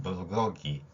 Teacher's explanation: 영어의 G는 목젖이 울리는 소리.